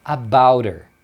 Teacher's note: o her perde o h e a gente emenda aqui o t com som de r